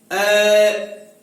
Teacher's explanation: ए का उच्चारण करते हैं तो जीवा है उसका मध्य भाग ऊपर उठता है और जीवा मुख के बीच में रहती है, इसलिए इसे क्या कहा जाता है, मध्य स्वर कहा जाता है।